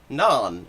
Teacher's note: Uzbek, for example, takes that long ah sound and makes it an o sound a lot of the time. But in Kyrgyz, it stays ah